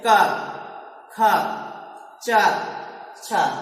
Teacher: दूसरा है अघोष। ऐसे व्यंजन जिनके उच्चारण में कंपन नहीं उत्पन्न होता है, जैसे क, ख, च, छ, ये अघोष कहलाते हैं।